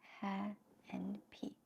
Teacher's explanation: Each one of them has a tone, and the first syllable ha is a first tone. P is like a neutral tone.